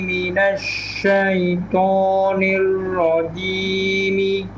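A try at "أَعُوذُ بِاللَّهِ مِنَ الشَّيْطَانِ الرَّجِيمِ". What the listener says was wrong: Ya, sya-nya sedikit lagi. Sya. A'udzu billahi asyaitonir rajim.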